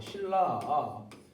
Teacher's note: 이 니은이라고 하는 애가 이렇게 리을을 만나면은 거의 다 뭐가 되냐? 다 얘가 니은이 리을로 바뀐다